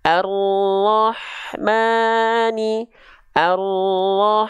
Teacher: contoh arahman itu enggak diayunkan tapi Maknya tepat dua harakat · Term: mad tabi'i